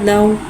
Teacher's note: वावलिन को होठों की गुलाई के साथ अदा करके पढ़ेंगे। दाल वाव ज़बर दाऊ।